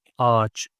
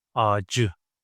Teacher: But ç is an explosive consonant, so it needs to get softened, needs to alternate itself to the relative one